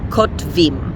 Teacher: it's not too difficult to say the T sound and then the V sound without putting a sound in between.